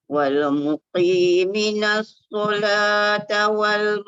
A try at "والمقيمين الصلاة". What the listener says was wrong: Mi panjang. Wal muqimin. Dia qaf dah masuk betul lah tu. Cuma jangan tekan kuat lagi. Jangan muqi. Jangan. Yang tak tepatnya wal muki. Muki jadi kaf. Wal muqi cukup. Jangan wal muqi. Terlalu tekan kuat sangat. Sebab dia berbaris bawah ni dikurangkan dia punya tafkhim.